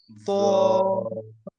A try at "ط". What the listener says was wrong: জি, মোটা করতে হবে, জিহ্বার গোড়াকে চাপ দিতে হবে, তটা মোটা হরফ।